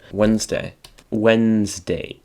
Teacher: the d and the e here are silent and the s is pronounced like a z